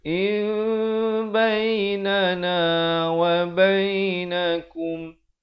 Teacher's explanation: In bainana wa bainakum, izhar syafawi. Izhar syafawi, mimnya diberikan tanda mati. Jangan dipanjangkan.